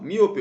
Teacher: miope uma proparoxítona a anti penúltima sílaba é mais forte